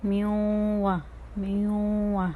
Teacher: اب یہاں پر واو آ رہی ہے، واو بھی حروف ادغام میں سے ہیں. تو یہاں پر نون ساکن کی آواز جو ہے وہ مدغم ہو رہی ہے واو میں